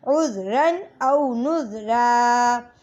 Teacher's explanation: حمزہ واو زبر او، نون زال پیش نز، او نز، را دو زبر رن، عز رن او نز رن۔ اور وقف کی صورت میں دو زبر کی تنوین ہے، تو وقف کی صورت میں کھینچیں گے اس کو، عز رن او نز را۔